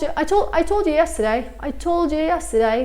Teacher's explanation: you becomes like a schwa sound very often